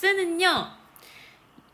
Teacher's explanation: 좁혀진 발음기관 사이로 공기가 흘러나가면서 나오는 소리예요. 이때 공기가 흘러나오면서 마찰이 발생하게 되겠죠. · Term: 마찰음